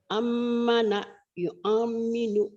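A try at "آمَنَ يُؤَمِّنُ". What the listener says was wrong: Ditahan. Ammana yu'amminu. Ditahan lagi.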